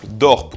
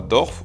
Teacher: Et on a aussi la ligne d'Eifel, qui sépare les dialectes qui ont maintenu le p final de ceux qui l'ont fait évoluer en f. On aura par exemple Dorp au nord, mais on aura Dorf au sud.